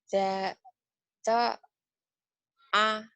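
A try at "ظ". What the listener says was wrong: Ini ada titiknya. Jadi zo. Bukan to.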